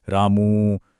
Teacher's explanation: ह्रस्व स्वर से लगभग 3 गुना समय लगता है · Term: प्लुत स्वर